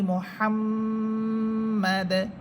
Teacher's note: এখানে থামলে দাল হরফ সাকিন হবে এবং কলকলা হবে